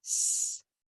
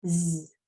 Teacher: S has 2 sounds. It can make a quiet, voiceless sound, which is just air, S, or it can make its vibrating sound that sounds like a Z, Z.